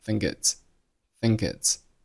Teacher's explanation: think▁和▁it▁发生了辅元连读